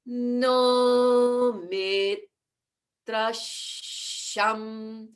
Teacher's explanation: Shan no. And then from that high note, we go down to the low note for mi